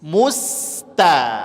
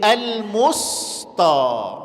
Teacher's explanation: kalau sudah ditarik sinnya, maka insyaallah tan-nya ikut tipis